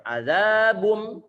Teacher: Yang dimonyongkan bibir adalah di atasnya huruf ba saja yang didomahkan. Azabum langsung ditarik. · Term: monyong bibir